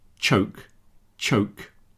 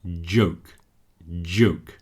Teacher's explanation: See the second one is much further down in my throat. There is more vibration happening in my vocal cords. · So if we take the word choke, choke, followed by joke, joke, choke, joke. The second one has the voice added to it. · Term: voiced